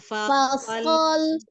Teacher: ketika lam fasol sukunnya ujung lidahnya menekan langit-langit ya